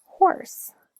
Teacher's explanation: It's sort of free air flowing through your mouth, but nonetheless, it is still classified as a fricative sound. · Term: glottal sounds